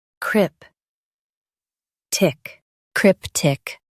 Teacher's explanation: Emphasize crip and keep tick soft.